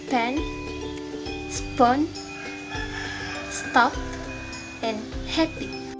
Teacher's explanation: The air passage is completely blocked by closing the lips and raising the soft palate. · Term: labial plosive